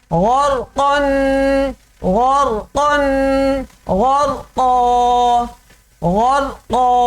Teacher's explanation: غرقا. تینوں حروف موٹے پڑھنے ہیں